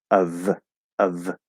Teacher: it's spelled with an f but it's a v sound